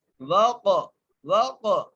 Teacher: آگے واو کو قاف سے ملائیں گے، قاف پر قلقلہ کریں گے، قاف کو موٹا کر کے پڑھیں گے